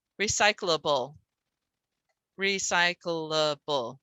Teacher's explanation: Everyone says it with an extra syllable there for the CL.